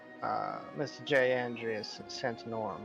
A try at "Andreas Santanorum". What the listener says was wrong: I'm not quite sure where you're getting the J from, but Andreas Santanorum, that's all fine.